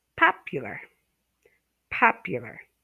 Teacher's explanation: you stress the first syllable